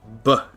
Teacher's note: a B is when you have your lips come together, and then you go B, and it makes one short sound. What's called a stop.